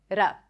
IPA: ɾ